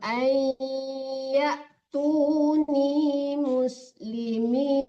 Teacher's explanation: Jangan an dibaca ya, Bu, tapi ai ditarik ke hidung.